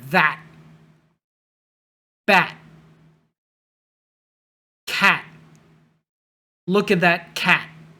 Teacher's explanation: Again, the T at the end, you just stop there.